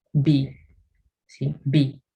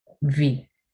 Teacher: Mientras que en B utilizamos los dos labios juntos